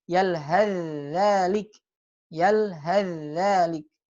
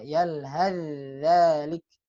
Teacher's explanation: Jadi tha-nya enggak dibaca.